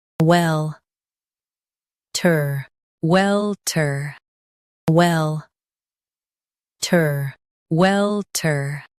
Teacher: Stress well and keep ter soft. Welter. Welter.